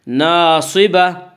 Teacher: گول تا وقف کی صورت میں ہائے ساکنہ بن جاتی ہے